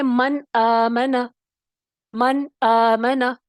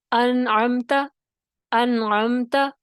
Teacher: اظہار ہو رہا ہے لیکن غنہ پھر بھی ہوگا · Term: مظہرہ